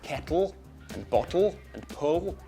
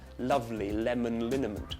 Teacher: We have one at the back of the mouth, like in kettle and bottle and pull, and one at the front in lovely lemon liniment. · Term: two versions of the L